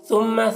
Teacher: ثا کو باریک پڑھیں گے میم مشدد غنہ کریں گے